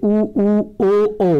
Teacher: वृत्ताकार स्वर, इसमें इसके उच्चारण में ओठों का आकार गोल हो जाता है